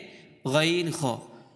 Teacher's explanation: তিন নম্বর মাখাজ হচ্ছে হলকের শেষ হইতে গাইন খ